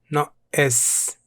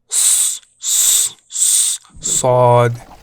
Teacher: This one's a bit unique. It's kind of like a really strong S sound made with the back of your tongue